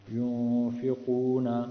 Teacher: تو یہاں اخفا کریں گے، یعنی نون کو پوشیدہ پڑھیں گے۔